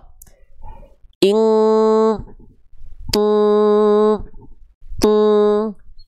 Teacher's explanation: ketika ditutup suaranya hilang berarti dengungannya kuat alias dengungan yang mendekati eng